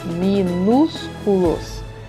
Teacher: A sílaba mais forte é o nus